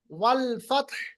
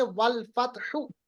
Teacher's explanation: इस तरह की कंडीशन में आपके पास चॉइस है कि आप ठहरे या ना ठहरे। अगर आप ठहरेंगे तो ता तो साकिन है ही, हा को भी आप साकिन बनाइए तो पढ़ेंगे वल फतह। हा को आवाज, हा की आवाज को आपको निकालना है, हा की आवाज को आपको निकालना है, वल फतह।